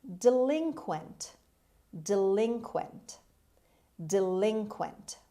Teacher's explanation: the stress is on the second syllable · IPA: /dɪˈlɪŋkwənt/